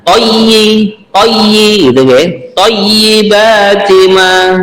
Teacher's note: ya yang pada kalimat toyi, jangan lupa kita tunaikan tasdidnya ya